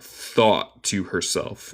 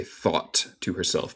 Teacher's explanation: En el acento estadounidense hacemos lo que se llama un glottal stop. Entonces, básicamente comemos el té y paramos, detenemos el sonido en nuestra garganta por un momentico.